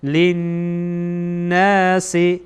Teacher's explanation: نون در اینجا مشدده، اینجا غنه میشه، ما هم غنه میکنیم